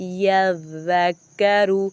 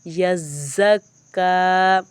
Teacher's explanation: ذال کو میں نے نرمی کے ساتھ پڑھا ہے، یذکروا، یزکا، یہاں اس زا پہ سختی کی ہے میں نے